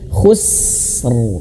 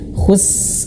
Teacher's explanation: Nah, tahan dulu huruf sinnya. Khus, alirkan dulu anginnya. Khus, baru r.